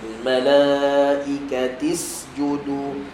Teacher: Sin ada hams lepaskan hams dia